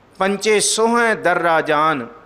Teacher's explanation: ਸੋਹ ਹੈ ਪੜ੍ਹਨਾ ਇਹਨੂੰ ਅਨੁਨਾਸਿਕ ਧੁਨੀ ਦੇ ਨਾਲ